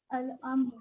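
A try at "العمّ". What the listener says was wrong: Now there is tashdid over there.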